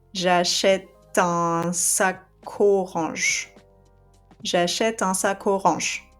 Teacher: So see here what I've done with achète is that I skipped the E and I just kept the T sound, right? When you say j'achète, it sounds at the end like a T, right? You read the E, you can see the E written, but if I speak, you hear only the T sound, right?